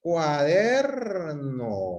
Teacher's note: ¿dónde está la mayor fuerza de voz? Está en la sílaba der. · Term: sílaba tónica